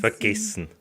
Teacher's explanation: E tends to be highly reduced or dropped,